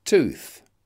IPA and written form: tuːθ (tooth)